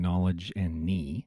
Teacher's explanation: And in English, where there's a K-N, the K has become silent. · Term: silent K